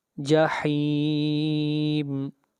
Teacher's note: جحیم کے اوپر مد عارض وقفی ہو رہی ہے اور اس مد کو 3 الف کے برابر کھینچ کر پڑھیں گے